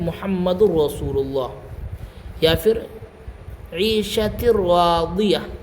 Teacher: لام اور را میں ادغام تام، یعنی کہ پوری طرح سے ہم ملا دیں گے